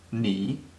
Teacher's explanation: Ni is pronounced in the third tone, hao the same